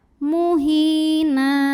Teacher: na mad iwad karena ada tanwin fathah yang diwaqafkan, maka tanwin fathahnya jadi fathah dan panjang 2 harokat